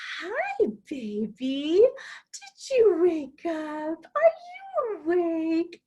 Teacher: You see my face brighten up. I slowed down a little bit. My pitch got higher. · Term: child-directed speech